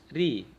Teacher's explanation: Untuk tebal dan tipisnya mungkin secara singkat, ketika dia berharokat fathah dan dhamma itu dibaca tebal, ro tebal. Kemudian ketika berharokat kasrah dibaca tipis